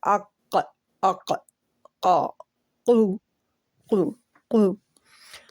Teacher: زبان کی جڑ اوپر قوے کے قریب نرم تالو کے ساتھ لگتی ہے، تو یہ قا ادا ہوتا ہے